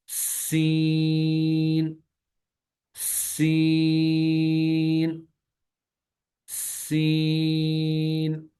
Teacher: سین میں زبان کی نوک کو ثنایا سفلا کے کناروں سے لگانا ہے، اور ساتھ ہی سیٹی کی آواز بھی آنی چاہیے